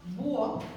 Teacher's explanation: la H no suena, y no impide la formación del diptongo o del hiato